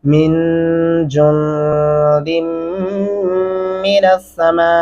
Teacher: میم کے سامنے الف کے اوپر چار الفی مدہ ہے اس لیے ہم آواز کو لمبا کریں گے چار الف کے برابر تک